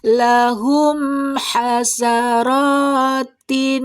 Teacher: Ketika dibaca jelas mim meninggalkan jejak dengung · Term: izhar syafawi